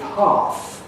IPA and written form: hɑːθ (hearth)